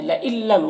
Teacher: نون ساکن کے بعد لام حروف یرملون میں سے تو ادغام تام ہوگا